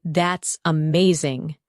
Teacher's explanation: When you say, That's amazing, your tone rises with excitement. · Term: rising tone